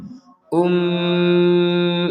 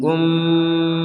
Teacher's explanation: ada mim bertasdid di sini maka kita harus mendengungnya Um itu di rongga hidung kita berdengung